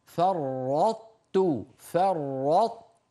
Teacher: الطاء الساكنة وبعدها تاء، هذا إدغام ناقص، يعني ندغم الطاء في التاء ونبقي صفة الإطباق من الطاء